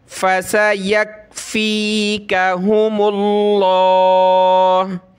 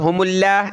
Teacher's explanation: लफ्ज़ अल्लाह से पहले मीम पे पेश है तो लफ्ज़ अल्लाह को मोटा करेंगे। फ़सयकफ़ीकहुमुल्लाह, इसको आप हुमुल्लाह नहीं पढ़ेंगे, बड़ा करके पढ़ेंगे।